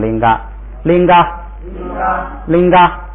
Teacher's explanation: 不松气变平声，所以变成拎嘎